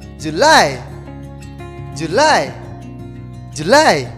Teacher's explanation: We have to say July. The stress is in the second syllable.